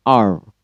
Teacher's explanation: lidah tidak benar-benar menyentuh atap dari mulutnya jadi hanya mendekati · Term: approximants